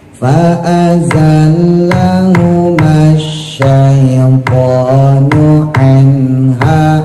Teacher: anhanya izhar, nun mati ketemu ha, setelah sempurna nunnya langsung dimasukin ke ha, jangan terlalu lama nahannya